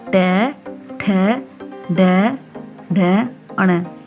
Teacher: तो दंत्य वर्ण है त वर्ग, त थ द ध न, तो ट वर्ग नहीं है, ट वर्ग मूर्धन्य है